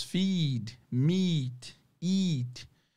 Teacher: todos que tem duas vogais juntos vocês vão esticar e fazer o e longo